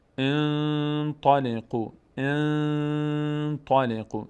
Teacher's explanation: یا اگر بعد از نون ساکن تا بیاد، انطلقوا، انطلقوا، صدا از بینی ادا میشه، صدای نون مخفی میشه در بینی و مقدار روش توقف میکنیم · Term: اخفا